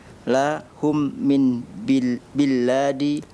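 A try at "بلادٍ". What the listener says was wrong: biladin. Lamnya jangan ditasdid. Biladin.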